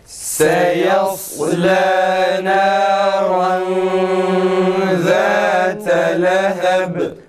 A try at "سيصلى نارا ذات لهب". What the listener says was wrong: Ra tam kalın çıksın arkadaşlar. Tekrar.